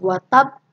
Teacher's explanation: Jadi kita syiddahkan dulu baru dilepaskan qalqalahnya. Tabat yada abil habib watab, ditahan dulu baru lepaskan watab.